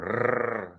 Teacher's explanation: He's got a rrr sound, quite a trill in his sounds there. You can do that for an effect.